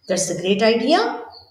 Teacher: That's a great idea with an exaggerated rising intonation. Sounds sarcastic. It sounds like the speaker actually thinks it's a terrible idea.